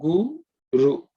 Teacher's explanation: Ug is a 3rd letter in the Ka Varga, not aspirated, okay? G plus U gives us Gu.